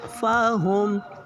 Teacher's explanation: ساکن حروف ہے میم پہ ساکن حروف اپنے سے پہلے متحرک حروف کے ساتھ مل کے پڑھا جاتا ہے. اور میم پہ پیش ہے تو ہونٹوں کو گول کر کے ادا کریں گے